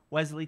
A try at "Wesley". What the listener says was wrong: You know, but I'm gonna stress that the Wesley, if you choose to go with the Wesley, there's no Z in my name.